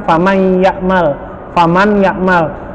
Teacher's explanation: famaiyakmal faman ya'mal maka dia masuk hurufnya tetapi ditahan fanai dan didorong suara kita ke rongga hidung